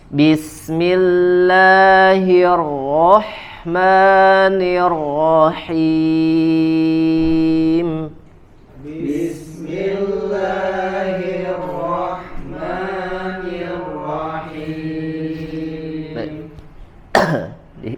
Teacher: ketika huruf nun atau mim dalam keadaan berharokat, maka tidak sepenuhnya huruf mim dan nun tersebut dikeluarkan suaranya dari al-khayshum. Tidak sepenuhnya ketika mengucapkan huruf mim dalam keadaan berharokat dari al-khayshum atau dari hidung, dari pangkal hidung. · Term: gunnah